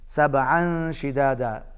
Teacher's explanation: سبعا شدادا، تنوین کے بعد شین حروف اخفا میں سے ہے، یہاں پر اخفا ہوگا، آواز ناک میں جائے گی